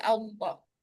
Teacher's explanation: lafaz Allah didahului fathah maka dibaca tebal. Makanya khusus lafaz Allah ee itu a-nya tebal. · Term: Fathah tebal